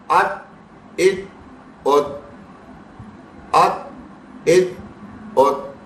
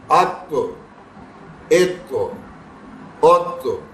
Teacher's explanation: یہ جو ایک آواز اس کے بعد ریپیٹ ہو رہی ہے نا چھوٹی سی، اس کو ہی کہتے ہیں قلقلہ کرنا، ایکو ساؤنڈ پروڈیوس کرنا